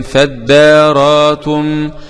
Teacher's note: بإبدال الهمزة الساكنة ألفا وقفا ووصلا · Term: الإبدال